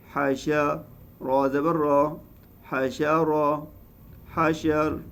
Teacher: حاشر میں بھی را ساکن ہوگی، اس سے پہلے زبر ہے تو پھر را موٹی پڑ جائے گی۔